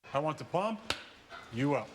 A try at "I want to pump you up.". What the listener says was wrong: We want to pump you up like that. You put the emphasis on the wrong syllable.